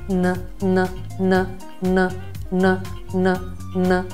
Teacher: La N ha come caratteristica il fatto che va a risuonare esattamente nel seno nasale, quindi n. Qual è la difficoltà normalmente legata a queste due consonanti?